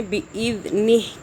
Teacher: دال کو سافٹ پڑھنا ہے، زبان ہلکی سی باہر کر کے